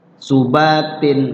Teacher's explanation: kemudian tanwin di situ fathat eh kasr ketemu Alif jadi Idhar Idhar tanwinnya dibaca jelas